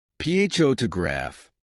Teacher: in the word photograph, the stress is on the first syllable, pho to graph.